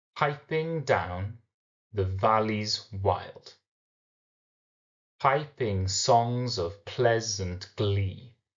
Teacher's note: the first syllable is a stress syllable followed by the unstressed syllable